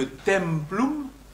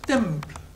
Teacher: Dès le IIe siècle avant Jules César, nous savons que templum se prononce temple. C'est-à-dire que la syllabe finale tombe.